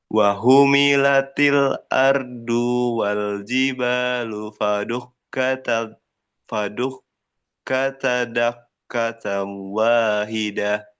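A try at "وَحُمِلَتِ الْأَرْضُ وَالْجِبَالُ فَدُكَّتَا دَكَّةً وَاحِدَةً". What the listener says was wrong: Haknya jangan sama dengan hak. Wahu itu hak. wahu lebih bersih. Terus ardu jangan diseret ardu wal lebih cepat ke wa. Ardu wal jangan ardu wal jangan dikasih space atau jangan dikasih spasi gitu ya. Langsung ardu wal gitu.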